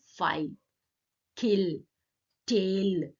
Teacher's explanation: The lateral le is velarized after a vowel or before a consonant at the end of a word.